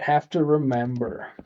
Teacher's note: first syllable is unstressed there. So, guess what we're going to do? Turn it into a schwa.